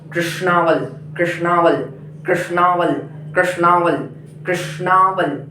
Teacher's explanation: यहाँ पर मूर्धन्य स है, आपकी जिह्वा मूर्धन्य को स्पर्श करे